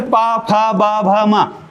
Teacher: क्योंकि पा बोलते वक्त होठ मिलेंगे ही, इसलिए इसको ओष्ठ से उच्चारित बोला जाता है।